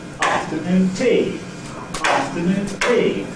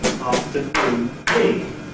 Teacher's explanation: I will not make the last syllable of noon stronger than the other syllables. I will make the first syllable of afternoon stronger